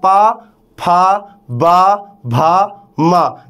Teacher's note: आप जब बोलते हो तो आपका दोनों होठ आपस में स्पर्श कर रहा है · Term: ओष्ठ